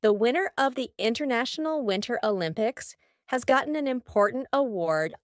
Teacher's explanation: see if you can hear my throat stopping the T in the middle of the word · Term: glottal T